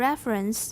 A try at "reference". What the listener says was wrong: 就省略那个schwa illusion. Reference. Not ra. Re. By reference.